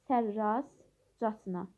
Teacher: Sərrazcasına t samit tələffüz zamanı düşür.